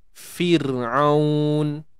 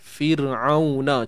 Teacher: untuk keadaan ra yang mati sebelumnya baris bawah, sepatutnya kita baca dengan nipis